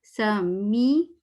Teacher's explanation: تھوڑا ای کی طرف جائے گی آواز، لپس تھوڑے اسمائلی ہوں گے